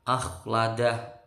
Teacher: Khoknya sukun ini, khok itu huruf isti'ala, jadi agak tinggi, mencucu ya.